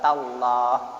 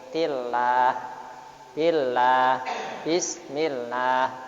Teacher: Sebelumnya ada huruf yang di garis fathah, di fathah, maka lam jalalah dibaca tafkhim, tebal. Kalau dibaca bawah atau kasrah maka dibaca tarkib.